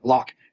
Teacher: In the Northeast, we're doing things like dropping our R